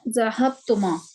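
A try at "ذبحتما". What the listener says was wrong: जबाह तुमा, बा पहले।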